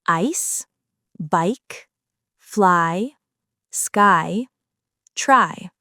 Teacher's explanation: This diphthong starts with an open /ɑː/-type vowel and glides upward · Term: diphthong I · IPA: /aɪ/